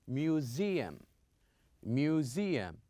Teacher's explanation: you can see the s but we pronounce it as zed